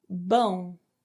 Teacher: the sound comes out of your mouth and your nose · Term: nasal sound